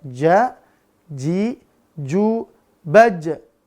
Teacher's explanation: Berarti pangkal lidahnya dia datar. Tidak terangkat. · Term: istifal